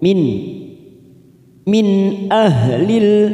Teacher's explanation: Ada huruf nun sukun bertemu hamzah. Namanya idhar halqi. Kita baca jelas tanpa mendengung.